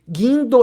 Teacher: De seguindo, então este U, ele não é um fonema, e, portanto, o G e U formam um único som, 2 letras, um som, é um dígrafo. Guindo, esse N aí, ele só serve para nasalizar o I, ou seja, o I é uma vogal nasal